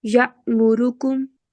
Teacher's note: حلق کی نچلے والے حصے سے بالکل آخر سے اس کی آواز نکالنے کی کوشش کریں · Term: حمزہ